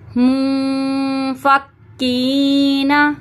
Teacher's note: نون کی آواز کو ہم چھپا دیں گے ناک میں، ٹھیک ہے، کیونکہ اخفا کے معنی ہیں چھپانے کے، اور اخفا یہاں پہ جب بھی اخفا کا گنہ ہوتا ہے تو ہم نون ساکن کو چھپا دیتے ہیں ناک میں، ٹھیک ہے۔